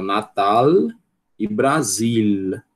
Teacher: os mais velhos ainda tendem a realizar esse L final